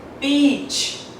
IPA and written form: biːtʃ (beach)